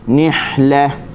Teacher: nih huruf ha halkum tengah. Pastikan kita keluarkan daripada situlah.